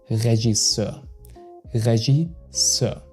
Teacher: So the G is soft like in genre and you pronounce the ending E-U-R, more like a Euer, okay, than E-R.